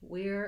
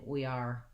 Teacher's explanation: you want to make sure you don't have any ah sound there